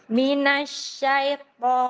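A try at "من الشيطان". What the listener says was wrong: Bukan syai. Ujungnya Ibu bukan i itu, ujungnya e. Syaito.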